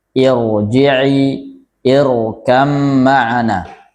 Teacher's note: ketika menebalkan tidak sampai mayun, sewajarnya saja sebagaimana ra yang sukun atau sebagaimana ra yang tebal. Irji'i, tidak sampai irji'i.